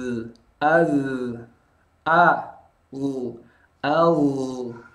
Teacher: Az a a kita tahu tadi bunyi sukunnya ngalir maka a a tipis jangan ikut a-nya tebal kalau a-nya jadi tebal o jangan o tapi a a tipis